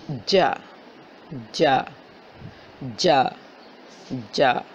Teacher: آپ کی زبان جب آپ جیم کی آواز نکالتی ہیں تو آپ کی زبان کا درمیان والا حصہ آپ کے اوپر تالو سے لگتا ہے